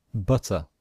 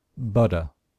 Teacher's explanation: the letter T in American English sometimes sounds like a letter D